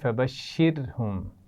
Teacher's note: فبشرهم را ساکن سے پہلے زیر ہے تو اس کو کیسے پڑھا جائے گا؟ باریک پڑھا جائے گا